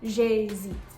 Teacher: Because there's a contraction, this is going to act as one syllable, j'hésite.